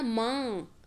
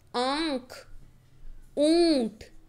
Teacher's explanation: अनुनासिक में हमारे मुंह और नाक दोनों से आवाज़ निकलती है।